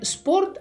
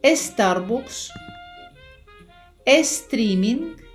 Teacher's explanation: в іспанській мові не є природною вимова двох приголосних на початку слова, принаймні, якщо йдеться про приголосні ешеп і ешет.